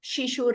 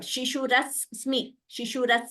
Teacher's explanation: though only one s is written two s are heard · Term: doubling of a letter